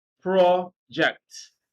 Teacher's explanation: when you are using this word as a noun stress is on the first syllable